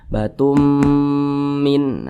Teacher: tapi langsung dimasukkan ke huruf mim batum Min nah kemudian didengungkan didengungkan itu suaranya ditahan atau dipanjangkan kira-kira dua ketukan